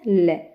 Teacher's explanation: पार्श्विक में कौन सा ल तो बगल में से हवा निकलेगी